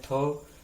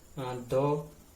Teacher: अघोष महाप्राण में थ, सघोष अल्प प्राण में जो है द